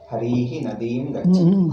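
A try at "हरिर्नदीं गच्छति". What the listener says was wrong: Harihi, why call Harihi? Harir nadim gacchati.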